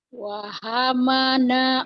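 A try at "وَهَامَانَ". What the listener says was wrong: Ma-nya panjang Bu. panjang, ini panjang.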